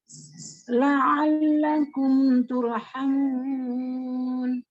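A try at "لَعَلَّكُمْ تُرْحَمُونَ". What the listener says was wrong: Bagus, Masya Allah. Lanjut.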